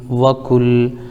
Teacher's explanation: کاف لام پیش کل، لام پر تشدید ہے، تشدید والے حرف کو 2 بار پڑھتے ہیں، ایک بار پیچھے والے حرف سے ملا کر، ایک بار خود سے، جیسے کاف لام پیش کل وکل۔